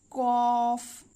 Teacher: এই দুই নোক্তা ওয়ালা কফ জিহবার গোড়া তার বরাবর উপরে তালুর সঙ্গে লাগিয়ে উচ্চারিত হয়